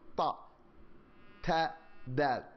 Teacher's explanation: you take the tip of your tongue, press it against your teeth, the top teeth